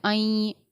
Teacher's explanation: آئیں کے جوائنٹ پر غنہ بھی ہوگا اور اخفا بھی ہوگا